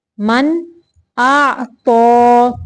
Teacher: اظہار کا قاعدہ ہے، صرف ظاہر کرنا ہے نون کو۔